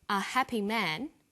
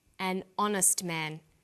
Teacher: So we say a happy man, but an honest man. The H is not pronounced, so honest sounds like it starts with a vowel.